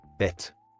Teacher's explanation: the tt indicates a doubled t sound, so it's pronounced with a slightly longer t sound, similar to holding the t sound a bit longer. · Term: gemination